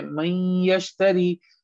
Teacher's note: ہم نون کو نوز میں لے کے چلے گئے، 2 سیکنڈ کے لیے ہم نے وہاں رکھا، اس کے بعد ہم نے نون کو چھوڑ دیا، ہم آگے پڑھنا شروع کر دیا۔